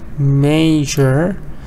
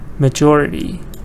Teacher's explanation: stress was on the first part major now stressing is here majority